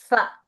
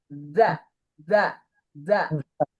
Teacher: huruf za itu diusahakan tidak ada angin. Diusahakan tertekan. Anginnya itu tidak hembus, tapi ada za gitu, tapi bukan hembusan seperti sa.